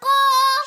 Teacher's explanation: یہ قوف موٹے والا ہے، اس کو اپنے ہونٹوں کو گول کر کے پڑھیں گے